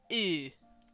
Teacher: You're making an E noise, but you're pushing it through rounded lips.